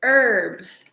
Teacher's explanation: Here in America, we don't really pronounce the H in herb.